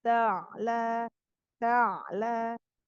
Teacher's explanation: ain sukun ada sifat tawasud atau bainiyah dialirkan meskipun tidak selama huruf yang rokhwah ya.